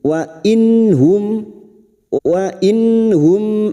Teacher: bunyi nun sukun dibaca jelas tanpa mendengung